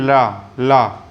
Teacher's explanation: अब दोस्तों पार्श्विक व्यंजन जो ला है उसकी परिभाषा क्या है बताते हैं कि इसके उच्चारण में वायु जीभ के पास से निकलती है